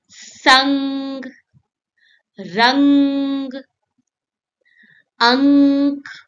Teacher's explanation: sounds like a soft hum through your nose. Close your mouth and say mm, that is anuswar.